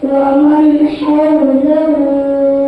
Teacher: نون ساکن کی آواز کو بغیر گناہ کے صاف ظاہر کر کے پڑھیں گے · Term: اظہار حلقی